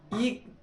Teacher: ई बोलोगे, जीभ का अगला हिस्सा काम करेगा आपका, ना कि और हिस्सा।